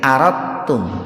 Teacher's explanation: Jangan aradatum, tapi aradtum. Jadi dalnya dimasukkan ke ta itu. Itu yang disebutnya itu idgham mutaqaribin itu.